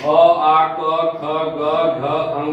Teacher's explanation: अ आ क ख ग घ अंग, ये सब कहाँ से बोले जाते हैं, कंठ से।